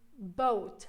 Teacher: boat is a diphthong it's made out of two vowel sounds